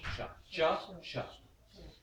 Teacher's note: this sha is the same place in the mouth as the cha.